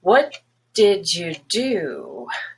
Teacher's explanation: do is going to have stress and what will have stress you start the highest on the what that's the most important word